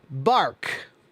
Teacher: words that have the AR sound in them, the R, that very strong American R sound